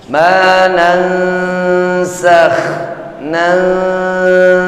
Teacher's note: proses menyamarkan bunyi huruf nun ketika bertemu dengan sa-nya · Ma nansakh, nun mati bertemu dengan huruf nun, nun mati bertemu dengan huruf sa, masuk kepada kaidah hukum tajwid ikhfa. Nun mati bertemu dengan huruf sa, ikhfa-nya ikhfa yang awsat. Pada prosesnya tahan dulu sejenak.